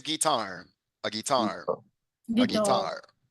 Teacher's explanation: the stress is in the second syllable